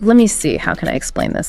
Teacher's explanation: Think of pausing to think, like, let me see, how can I explain this? The let me see stays pretty level. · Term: Level intonation